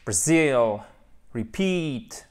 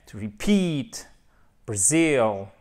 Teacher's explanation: On a nos deux syllabes avec une seconde syllabe qui va être celle qui est accentuée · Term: accent tonique